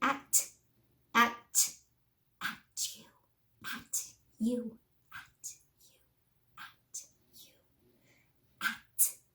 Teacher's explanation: Real sharp. There's no voice for at, for that T. It's sharp. And that's That's how you get that ch sound.